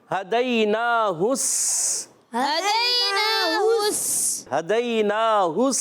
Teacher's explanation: अच्छा, हा पर पेश है, हा की पेश को डायरेक्ट सीन से मिलाएंगे, क्योंकि सीन पर तशदीद है, और ये अलिफ लाम खाली है, इसको नहीं पढ़ेंगे, इसको पढ़ेंगे नहीं. डायरेक्ट हा की पेश को सीन से मिलाएंगे, तो आवाज़ आएगी हदैनाहुस.